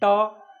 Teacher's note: और इसको हम लोग जैसे ट बोलेंगे, ट जो जहाँ जीभ सट रहा है उसको मूर्धा कहते हैं। ट देखिए जहाँ सट रहा जीभ ना, उसी को मूर्धा कहा जाता है।